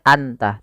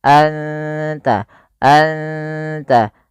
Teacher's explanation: suara nunnya samarkan ke ta dan tidak boleh dijelas, tidak boleh anta, tapi anta, anta, langsung ke makhraj daripada huruf ta. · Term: ikhfa hakiki